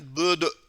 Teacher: sanki yankı yaparmış gibi. Yani kalkale dediğimiz bir tecvid kuralımız var.